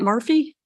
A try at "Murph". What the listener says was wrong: There's no Y, so it's not a typo, but a lot of people get it wrong.